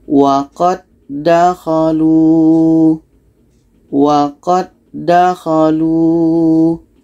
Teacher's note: tidak berlaku hukum qalqalah. Karena hukumnya idgham mutamasilan. Qa ini terus masuk ke da.